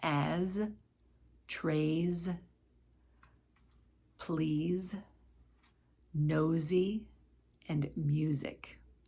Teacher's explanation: when an s follows a vowel sound it will sound like a z